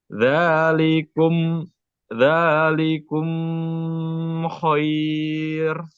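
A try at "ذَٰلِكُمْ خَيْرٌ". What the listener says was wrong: nah, mim bertemu kha, apa hukumnya? Idhar, idhar syafawi. Jadi nggak perlu ditahan. Dzalikum khair.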